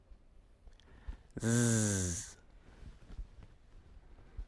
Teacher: Put your hand on your throat. You should feel the vibration of your vocal cords when you say Z.